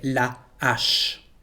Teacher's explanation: The first letter here is an unplugged H. There is no liaison between the two words la and H, so we have to say la H.